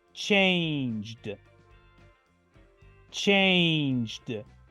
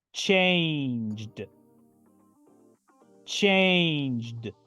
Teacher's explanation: solo pronuncio la letra d al final la e es casi muda